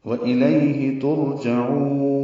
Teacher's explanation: عین وسط حلق سے ادا کریں گے ، اس کو لمبا کریں گے، وَإِلَيْهِ تُرْجَعُونَ وقف المتعارض السکون